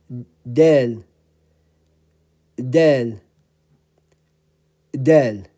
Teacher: the tip of the tongue is touching the Upper Front Teeth